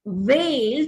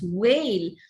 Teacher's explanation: Indians most often do not make a distinction between the labiodental v and the labiovelar w, the rounding of the lips for w, which is a semi-vowel, and the fricative sound v.